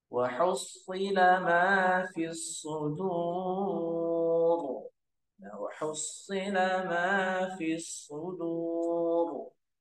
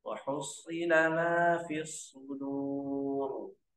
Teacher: Shad itu punya sifatul huruf. Salah satunya itu isti'la. Isti'la itu terangkatnya pangkal lidah.